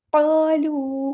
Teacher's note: قاف پورا ادا کرنا ہے، ہیوی لیٹر ہے ہمارا